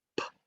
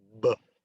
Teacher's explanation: So p is unvoiced and b is voiced